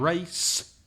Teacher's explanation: race is only from the mouth through the teeth